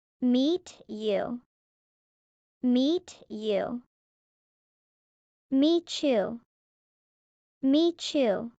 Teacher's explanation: T plus Y equals CH. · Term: liaisons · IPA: /tʃ/